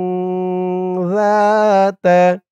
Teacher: জালের উচ্চারণটা একদম নরম হবে জিব্বার মাথা উপরের দাঁতের মাথার সাথে লাগবে